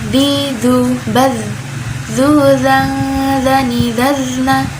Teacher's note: huruf Zal makronya ada di ujung lidah mengarah ke ujung gigi seri atas